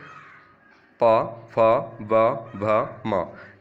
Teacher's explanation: देख लेते हैं ओष यानी होट से जो बोले जाते हैं एक बार होट चिपक हैं और वापस वापस आ जाते हैं हमारे होट तो उनको हम बोलते हैं ओस्ट यानी होटों से बोलने वाले